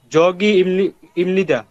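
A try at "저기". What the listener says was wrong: জগি না, ঝগি। বরিকার জ এবং ঝয়ের মাঝামাঝি, ঝগি।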